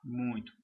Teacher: Parte do som parte passa pela boca e parte para pelo nariz. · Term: encontro vocálico nasal